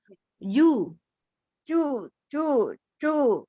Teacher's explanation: Kalau ju sama sekali nggak boleh ada udara sama sekali tuh. Nggak ada sofir juga.